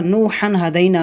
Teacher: اسی طرح نوحًا ہدینٰ میں دیکھیں 2 زبر کی تنوین کے بعد ہا آ رہا ہے جو کہ حروف حلقی میں سے ہے، اس وجہ سے یہاں پر اظہار ہوگا، غنہ کر کے نہیں پڑھیں گے